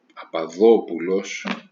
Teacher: this word Papadopoulos is stressed on the third from the end, the penultimate syllable, the antepenultimate, I'm sorry.